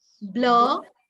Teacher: In RP, the R is not pronounced at the end of a word. Yes. However, you will pronounce the R if it is followed by a vowel.